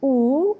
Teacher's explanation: when we say ooh our lips is rounded